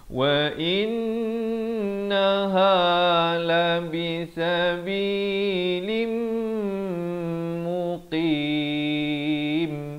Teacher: Masuk beserta dengung di sini. Daripada sabilin jadi sabilim. Tapi jangan lupa dengungkan 2 harakat.